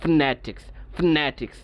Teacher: আমি নতে একটু ছাপ দিয়ে উচ্চারণ করছি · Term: স্ট্রেস